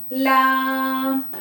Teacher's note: زبان کا کنارہ اوپر کے مسوڑوں سے مل کر ادا ہوتا ہے۔